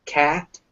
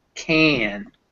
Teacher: cat and can the a sound sounds different that's because it's become nasal before that a so instead of a it's a cat can